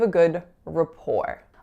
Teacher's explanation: our a is totally reducing to schwa · So I'm saying rapport rhymes with the number 4. You'll notice as well that that first syllable, RA, is totally reducing to schwa.